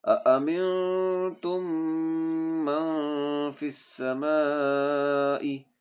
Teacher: یہ نون پہ اخفا ہوگا اور یہ تا یہ میم کے ساتھ ملے گا، یہ میم پڑھا نہیں جائے گا اور یہ نون غنہ اخفا ہوگا، ٹھیک ہے؟